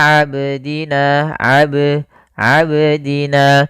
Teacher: dia menambahkan Hamzah pada lafal qalqalahnya